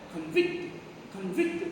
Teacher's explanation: Convict, this is the verb, this is called disyllabic word. We have to stress on the second syllable.